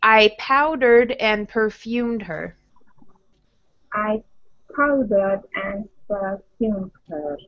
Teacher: So powdered, pow is strong, perfumed, second syllable is strong.